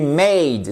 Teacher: C'est ce qu'on appelle une diphtongue en anglais et que vous retrouvez sous la forme de 2 symboles en phonétique. Diphtongue, double son a et pas e.